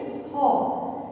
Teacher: হ ধ্বনি কণ্ঠনালীতে উৎপন্ন হয়। হ ধ্বনিটি আমাদের কণ্ঠনালী থেকে উৎপন্ন হয়।